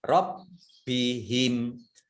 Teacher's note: Nah, ini ro-nya dibaca double, ada tasdidnya. Baknya juga dibaca double, ada tasdidnya.